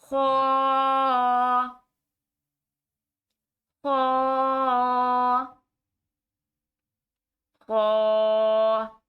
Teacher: خا کو گلے سے پڑھا جائے گا لیکن موٹا کر کے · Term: موٹے حروف